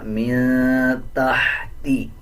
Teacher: تا کے بعد ہا ہے، اس ہا کو باریک پڑھا جائے گا